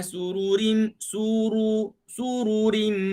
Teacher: Pastikan kita sebut ra, lidah kita menyentuh gusi kesat. Kita rasa dari gigi, letak lidah kita pada gigi, tarik ke belakang, kita ada gusi, itu dia panggil usul thanaya al-ulia.